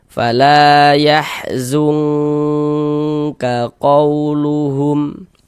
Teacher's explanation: di bagian zungnya itu suaranya itu kita tahan, kita panjangkan sejenak sepanjang 2 harokat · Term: ikhfa